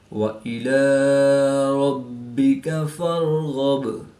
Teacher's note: راو ساکن سے پہلے زبر ہے تو را کو پور یعنی موٹا پڑھیں گے۔ غین پر زبر ہے تو را غین کو بھی پور یعنی غین حروف مستعلیہ میں سے ہے تو اس لیے اس کو پور یعنی موٹا پڑھیں گے۔